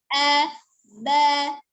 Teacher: Kemudian ba-nya kan bertemunya dua bibir safatain, nah maka berubahnya bibir saja, tapi nanti terbuka lagi a ba.